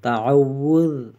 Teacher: ذال میں نرم، زبان کی نوک اوپر والے دانتوں کے ساتھ، تعوذ۔ عین کی آواز نکالیں گے، تعوذ۔